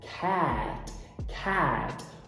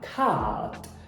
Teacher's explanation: Os americanos fazem um ash mais aberto, mais voltado para o E. Cat. Os britânicos fazem esse ash mais parecido com o A.